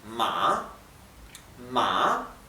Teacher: la a baja y sube la pronunciación